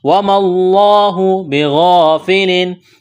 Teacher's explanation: لفظ اللہ کے نام سے پہلے زبر ہے، لفظ اللہ کے نام کو موٹا کرنا ہے۔ وَمَا اللَّهُ بِغَافِلٍ، الف مدہ ہے، الف کے برابر کھینچنا ہے، غین کو موٹا کرنا ہے۔